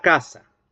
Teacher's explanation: La primera sílaba constituida por el oclusivo velar sordo más la vocal, más la A, ¿verdad? Entonces, en esa sílaba el núcleo va a ser la A, ¿sí?